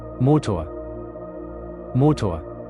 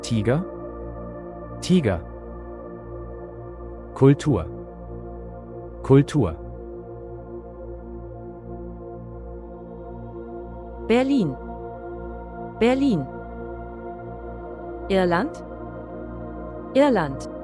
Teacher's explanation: Se llama r vocalizada porque se pronuncia como una vocal, una a corta y oscura. La lengua de nuevo no participa.